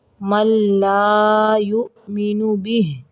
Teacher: من نہیں پڑھیں گے میم کو لام کے اندر ملائیں گے